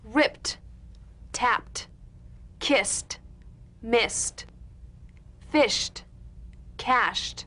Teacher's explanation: ED endings that are really pronounced as T.